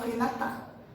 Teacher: E eles falam Renata, como se tivesse um acento na última sílaba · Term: tônica